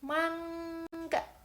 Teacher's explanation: bagian belakang lidah diangkat menyentuh langit-langit belakang, lalu tidak ada hembusan udara keluar dari mulut, lalu suara bergetar. Nah, contohnya itu seperti ini. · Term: gugus konsonan eng